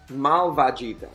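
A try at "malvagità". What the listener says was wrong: With an accent on the last vocal.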